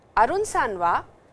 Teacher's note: the sentence has been left incomplete with a rising intonation